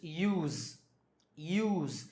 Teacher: when we say the word use as a verb, it's use, use. This s becomes z